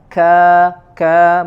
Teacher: ka dia syiddah, ya, kemudian juga disempurnakan dengan sifat hams, mengeluarkan sedikit angin. Ka berbeda dengan huruf qaf, ya.